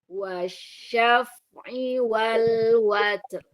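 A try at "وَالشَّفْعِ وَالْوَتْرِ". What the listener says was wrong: Roknya terlalu tipis. Watr. Watr. Nah, bagaimana cara membedakan tebal dan tipis ya? Kalau tebal, pangkal lidahnya naik ke atas. Oro, oro. Kalau tipis, pangkal lidahnya nggak naik. Eri, tuh ya. Pangkal lidah aja ya main di situ.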